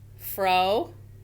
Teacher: I'm going to stop the syllable at the end of that vowel. So we're going to give it a long O.